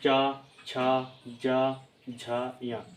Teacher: उसको हम तालू कहते हैं यानी चा छ ज झा य जब आप उनको उच्चारित करेंगे और बोलेंगे तो आप महसूस करेंगे कि आपकी जो जीभ है वो तालू को स्पर्श कर रही है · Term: तालू व्यंजन